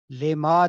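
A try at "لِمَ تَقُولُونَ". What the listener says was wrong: لمبا نہیں کرنا. جی بالکل.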